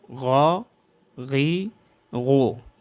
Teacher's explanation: موٹا ادا ہو، پر ادا ہو استعلاء کی وجہ سے